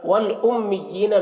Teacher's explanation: میم مشدد میم میں غنہ کریں گے